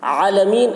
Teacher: عالمین، عین کو حلق سے ادا کریں گے